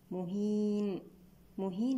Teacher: الياء وصل مد طبيعي بمقدار 2 حركات أما عند الوقف عليها فهي مد عارض للسكون بمقدار 2 أو 4 أو 6 حركات